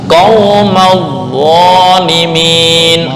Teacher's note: Agak rendah, kembali ke makhraj. Dijepit untuk dha, terus lidah naik ke atas atau isti'ala.